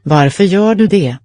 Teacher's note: Det. The T is dropped.